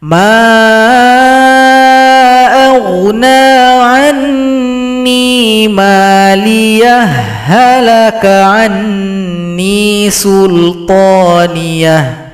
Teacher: sukun berjumpa dengan ha maka idgham harus dilebur.